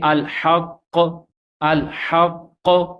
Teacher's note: اس کے بعد مشدد حرف جو ہوتا ہے اگر اس کے اوپر وقف کرنا ہو تو مشدد حرف کی تشدید تو پڑھیں گے لیکن اس کا جو حرکت ہے وہ نہیں پڑھیں گے۔